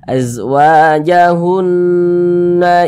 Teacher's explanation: cara bacanya diunahkan jadi suaranya kita tahan kita panjangkan sejenak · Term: ghunah musyaddadah